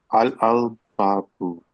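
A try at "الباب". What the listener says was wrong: Mm-hmm.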